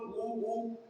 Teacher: उसके साथ दूसरा क्या, उ उ, ये क्या है, देखो उ बोलो, उ ओष्ठ से ही निकल रहा है, उ या उल्लू का ओठ, याद रखना।